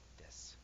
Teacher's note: you hear people say des with the breath instead of trying to say desu